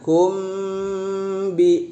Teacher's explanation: Nah ini juga banyak yang salah, kum ya, apakah belum diajarkan atau memang tidak terbiasa. Mim ketemu dengan ba itu adalah ikhfa syafawi, dia harus ditahan.